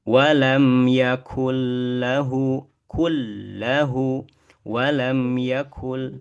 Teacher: kaf itu dia pangkal lidahnya nempel ke langit-langit atas yang Ke tulang yang keras.